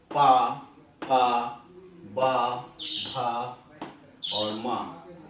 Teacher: दोनों ओठों के मिलने से जो ध्वनि निकलती है वो वर्ण उस वर्ग में आने वाले वर्ण ओष्ठ वर्ग में आते हैं।